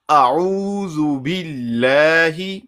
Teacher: زال پیش زو ہونٹو کو گول کر کے ادا ہوگا